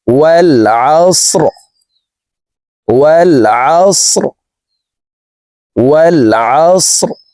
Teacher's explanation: ওয়াও লাম জবর ওয়াল, আইন সাদ জবর আস, ওয়াল আস রজের রি, ওয়াল আস রি, রকে ওয়াকফের ক্ষেত্রে সাকিন করে ফেলবো। তো শব্দটি এইভাবে পড়তে হবে, দেখুন, ওয়াল আসর, ওয়াল আসর, ওয়াল আসর।